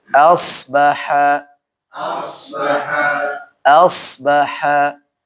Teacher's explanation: Hamzahnya tipis, shotnya tebal ya.